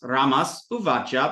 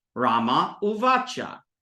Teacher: plus Eva plus via here you'll notice it's the ha sound the S sound before a non a vowel it just drops and becomes nothing